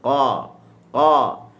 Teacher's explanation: Maknanya di permulaan pangkal lidah ni huruf qaf. Dia bertemu dengan lelangit yang lembut. Ataupun kita boleh sebut juga dengan anak tekak tu lah.